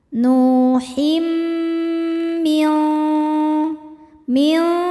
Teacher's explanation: Berikutnya ada idgham bi gunnah karena ada tanwin kasrah menghadapi mim. Cara bacanya tanwin dileburkan ke mim disertai dengung. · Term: idgham bighunah